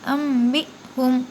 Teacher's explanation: انبئہم، قال یا آدم انبئہم۔ اب یہاں بھی دیکھیے اقلاب ہوگا، نون کی آواز کو میم سے بدل کر پڑھنا ہے